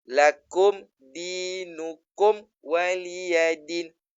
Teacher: Dinukumwa kumwa wa bila kumwa wa tu dia tak asyad kat sini ni tajwid nak minta kita asyad kita tekan supaya memang kena matikan kum sebab nak jumpa dengan huruf wau tak boleh dengung tak boleh ikhfa dia kena izhar yang jelas kena jelaskan izhar syafawi dia.